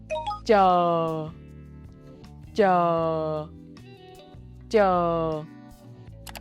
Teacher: Tip of the tongue touches the roof of the mouth, just behind the gum ridge, like in church, but softer. For Northern dialect, release a quiet, unvoiced burst of air.